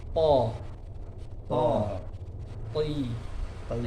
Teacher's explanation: jadi ketika kasrah dia tetap tebal lidah belakang tetap naik ke arah ti gitu ya.